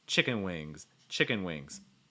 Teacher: that S will have a slight voiced sound to it because the NG sound is voiced. It's like zzz.